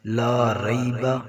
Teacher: زبر یا ری، لا ری، با زبر با، لا ری با، لام کے ساتھ الف مدہ ایسے 1 الف کے برابر کھینچنا ہے